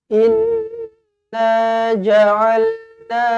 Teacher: Inna nun sabdu wajibul gunnah, dengungkan 2 harakat.